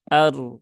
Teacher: ro itu dia sukun berhubungan dengan fathah maka dia dibaca dengan tafkhim ya atau tebal maka tunaikan ketebalannya Ar ya bukan ar ar ya kemudian huruf